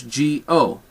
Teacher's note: the W sound is very slight it's not a bright o uh it's more you're breathing through it and really making your